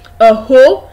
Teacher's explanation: when you get to hoe, you discover that your voice, the pitch of your voice rises. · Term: rising tone